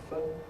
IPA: f